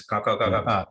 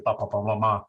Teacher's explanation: It goes ka ka ka ka ka, back of the throat all the way to pa pa pa ma ma to the front.